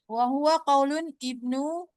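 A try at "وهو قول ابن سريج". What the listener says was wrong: Kaulu aja, kaulu ibni Suraij. Suraij. Wahwa.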